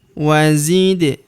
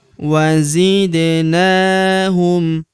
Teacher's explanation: Huruf Da berharokat sukun kita pantulkan atau kita qalqalahkan.